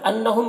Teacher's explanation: انہم کے نون مشدد غنہ ہوگا، ہم کے میم میں اظہار شفوی ہوگا۔